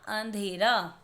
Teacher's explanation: तो अ के बाद नाक से आवाज़ आ रही है, इसीलिए हम यहाँ पर चंद्र बिंदु लगाएंगे और शब्द बना अंधेरा।